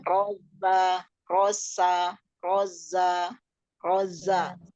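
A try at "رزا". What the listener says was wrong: Za ya, bukan sa. Za ya.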